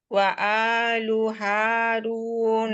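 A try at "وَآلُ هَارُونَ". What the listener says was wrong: এই যে মাতগুলো দেখেন আপনি মানে হাই করতেছেন, লাইক আলু হারু, না ফ্ল্যাট পয়েন্ট, ওয়া আলু হারুন,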